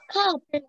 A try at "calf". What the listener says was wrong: Okay, not calf, not calf. Ekhane L dekhe kyo etake calf bolbe na. This is calf. L ta invisible thakbe.